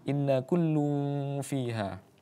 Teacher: Nun yang kemudian bertasydid maka hukumnya adalah ghunah musyaddadah.